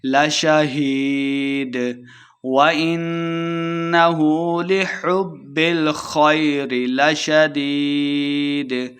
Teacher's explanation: وَإِنَّهُ نون مشددہ غنہ کریں گے۔ لِحُبِّ، با مشدد ہے، ہا کو با کے ساتھ ملا کے پڑھیں گے۔